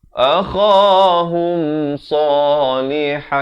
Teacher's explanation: Ha pedas di pertengahan kerongkong